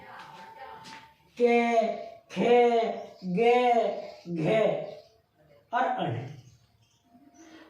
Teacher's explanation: तो जो इनकी ध्वनि आएगी ना वो गले से आएगी, है ना। के देखो जीभ नीचे लगी रहेगी, नीचे तालू में, नीचे वाले तालू में, और जो हवा है वो सीधी बाहर जाएगी कंठ से आगे, तालू ऊपर वाले तालू से टकराती हुई वो बाहर निकलेगी। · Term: कंठ्य